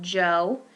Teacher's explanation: We can have rounded lips. Those are going to be our back vowels, such as the O as in Joe, the oo as in who.